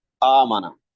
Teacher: جو پہلے ہم آواز نکالتے ہیں وہ حمزے کی ہے، اور جب اس آواز کو کھینچتے ہیں تو وہ الف کی۔ پہلی آواز حمزے کی ہے اور دوسری آواز وہ الف کی ہے جو حمزے سے بدل کر آیا ہے۔